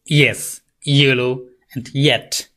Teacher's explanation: the middle of the tongue rises up to the hard palate. Hard palate হচ্ছে আপনার যে শক্ত যে তালুর অংশটা, সেখানে হচ্ছে আপনার এটা সেই দিকে আপনার রাইজ করবে। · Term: palatal sound